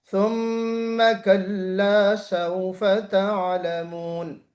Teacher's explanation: میم مشدد کا قاعدہ ہے، غنہ واجبہ ہے